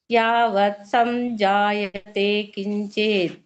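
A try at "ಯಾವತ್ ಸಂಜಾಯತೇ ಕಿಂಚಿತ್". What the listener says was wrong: ಸರಿ ಮಹಾಪ್ರಾಣಗಳಿಗೆ ಸ್ವಲ್ಪ ಒತ್ತನ್ನ ಕೊಡಿ ಉಳಿದೆಲ್ಲ ಚೆನ್ನಾಗಿತ್ತು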